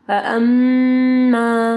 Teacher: میم مشدد ہے ٹھیک ہے، یہاں پہ غنہ ہوگا